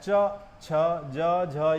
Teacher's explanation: तालु के साथ जीभ का स्पर्श होने पर इस वर्ग का उच्चारण हो जाता है, इसलिए इसे कहा जाता है तालव्य व्यंजन।